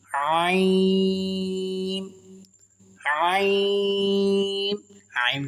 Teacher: عین کو کھینچ کر پڑھیں گے کیونکہ اس کے اوپر مد ہے